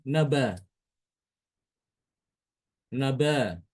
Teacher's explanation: hamzahnya diganti dengan huruf alif, dibuang, disingkirkan